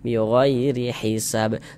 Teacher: huruf ra memiliki harokat kasrah nih, baris satu di bawah huruf ya, tanda baca kasrah, maka huruf ra dibaca tipis, dibaca tarkik, tipiskan huruf ra-nya